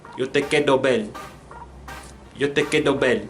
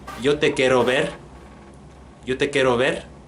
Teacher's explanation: Also, one thing that I noticed about the Caribbean accent is that the R can be just like a straight D